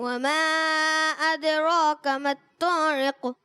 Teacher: وما أدراك ما الطارق ادراک کاف، یہ جو کاف ہے یہ ڈنڈی والا کاف کہلاتا ہے. اس کو ہم باریک رکھیں گے، اس کو موٹا نہیں کریں گے.